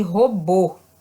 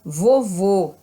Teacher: o acento circunflexo ele dá a vogal o som fechado